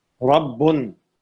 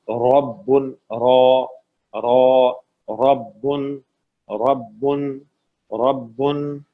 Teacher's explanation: ربن، را فتحہ کے ساتھ ہے، زبر کے ساتھ ہے تو را کو موٹا پڑھیں گے. ربن، را ربن ربن ربن.